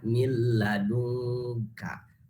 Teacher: Idgham masuk nun ini ke lam, akan tetapi tanpa ada guna. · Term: idgham bila guna